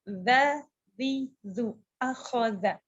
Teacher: Za keluarnya dari ujung lidah menyentuh ujung gigi atas. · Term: huruf za